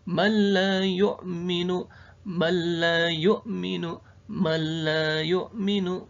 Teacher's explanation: Ada juga idgham bila guna, huruf nun sukun bertemu huruf lam. Cara bacanya gimana? Cara bacanya adalah tanpa guna.